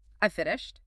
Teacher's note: The pitch drops at the end, signaling finality. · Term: falling intonation